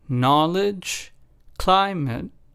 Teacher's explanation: in the first two words the stress was on the first syllable